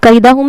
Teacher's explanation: یا لین ہوگا نرم آواز کے ساتھ، جلدی پڑھیں گے